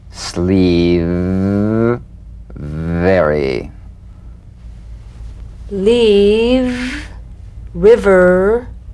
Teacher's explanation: upper teeth to lower lip feel the teeth planted right in the lower lip you set the lower lip vibrating that's what makes the sound